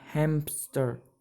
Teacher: a voiceless stop with the same place of articulation as the nasal consonant is inserted. In English, many people say hamster instead of hamster, so we add a p in the middle of the word. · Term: voiceless stop insertion